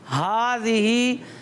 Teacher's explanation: ہا حلق کے سب سے نیچے والے حصے سے ادا ہوتا ہے